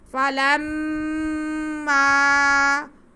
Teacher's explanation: لام کا زبر ہم میم کے ساتھ ملائیں گے اور یہاں پہ ایک الف کے برابر غنہ کریں گے۔ فلما، اس کے بعد میم پہ زبر ہے، آگے الف ہے، تو یہ الف مدہ ہو گیا، پہلے ایک الف کے برابر غنہ کریں گے، پھر ہم الف مدہ کو کھینچیں گے۔